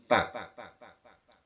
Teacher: ta makhrajnya berada di ujung lisan yang disentuhkan dengan pangkal gigi seri yang atas, tempat tumbuhnya gigi